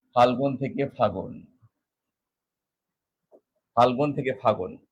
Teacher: মাঝখানে লটা ছিল এই ল কিন্তু এখানে আর নেই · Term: অন্তরহতি